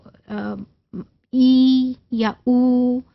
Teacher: लेकिन ये वॉइस्ड हैं बिकॉज वोकल कॉर्ड्स जो हैं these vibrate and these are used while pronouncing and producing these sounds